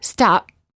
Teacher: generally do not release many of the final stops for example when they say the letter P in the word stop the lips stay closed no air comes out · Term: half P